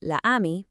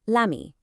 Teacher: if a short word ends in a vowel and the next word starts with one, French just gets rid of the first vowel to avoid a clumsy stop. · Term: elision